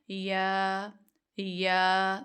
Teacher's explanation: जुबान उठ ऊपर तालू की तरफ ही रही है। लेकिन जाके तालू से बस लग नहीं रही।